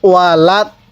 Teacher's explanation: এই দদের মধ্যে 4 আলিফ টান দিব